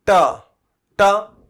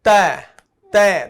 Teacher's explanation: और मूर्धन्य पठन, जीभ का, याद कीजिएगा, ट, ट जीभ मुड़ गई है, ट। ये तय, तय, दांत टच होते हैं तय में